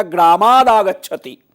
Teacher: आगच्छति का आ ये स्वर है तो त को द हो जाता है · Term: त का द हो गया